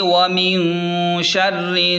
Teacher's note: را کو نون سے ملا دیں، نون پر تشدید ہے، یہاں تھوڑی دیر آواز ناک میں روک کر غنہ کریں